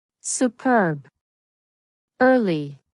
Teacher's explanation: Take the schwa sound uh and make it longer.